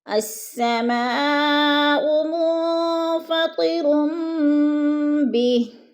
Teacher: چھوٹی سی میم لکھی ہوئی ہے تو اس پہ غنہ کریں گے، ناک میں بھی آواز لے جائیں گے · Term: قلاب